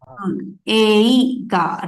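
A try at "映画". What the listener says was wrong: But actually, the pronunciation is different, right? We will pronounce it as ega. E will not be there. It is not eiga. It is ega. Pronunciation will be ega, which is movie.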